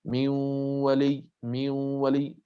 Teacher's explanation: نوازن بينهما، صوت 50% من الفم و50% من الخيشوم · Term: صوت الغنة